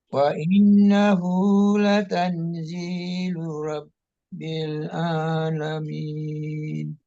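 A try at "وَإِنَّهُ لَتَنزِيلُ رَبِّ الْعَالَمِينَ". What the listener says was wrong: Wa innahu, jadi gunnahnya nun tasdid itu ya harus dimantapkan. Wa innahu latal sama ikhfa latanzilu rabbil alamin. Wa innahu latanzilu rabbil alamin.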